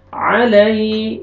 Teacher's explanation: या लीन, या साकिन से पहले फतहा, नरमी से अदा करेंगे।